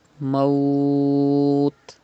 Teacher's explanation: You can see a temporary sukun after waw lean. So it is madde lean aris. You have to pronounce by stretching up to 5 harakat.